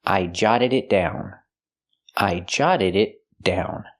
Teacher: The double T is a fast D, jotted, and the D at the end of the verb is also a fast D.